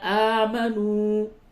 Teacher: آ کھڑا زبر ہے، حروف مدہ کی طرح کھینچے، اور واو حروف مدہ ہے اس جگہ پہ۔